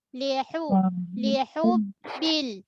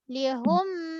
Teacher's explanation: Ha pedas tengah kerongkong. Seterusnya huruf ba jaga sifat syiddah, tertahan dari segi suara.